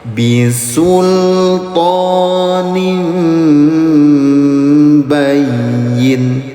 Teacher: Tanwin bertemu dengan huruf ba, ada mim kecil di atas di tengah-tengahnya, namanya iklab ayah bunda, disingkat di kodenya IQ. Cara bacanya samar dengungkan, bunyi tanwinnya selama 2 harokat.